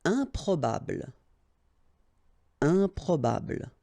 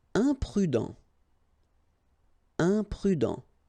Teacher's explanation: Keep in mind that when you add this em at the beginning of all the words, you will get the nasal sound un. Okay, you don't pronounce the m, but it goes like un.